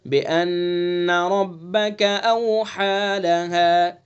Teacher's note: نون مشدد ہوگا تو اس کے اندر غنہ کریں گے